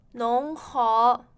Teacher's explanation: it sounds more like an O sound than an ow sound